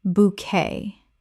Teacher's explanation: Two syllables with the t completely silent. This French word kept its original pronunciation.